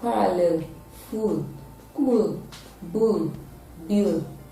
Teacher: this sound is produced with the tip of the tongue touching the alveolar ridge and then there is a partial closure at the middle of